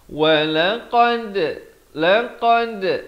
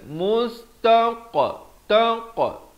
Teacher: jim dan dal dipepeskan, qaf dan juga ta dibulatkan.